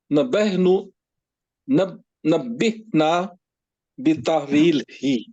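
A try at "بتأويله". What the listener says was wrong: बीता अलिफ को आप नहीं ना पढ़ रहे, रा है, ता है, यहाँ भी है बीता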